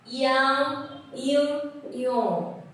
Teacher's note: cái độ hơi phát ra mũi nó sẽ có cái độ ngân sau khi mình đã kết thúc âm